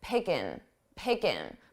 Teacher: I dropped that ing, I dropped that G sound from the ing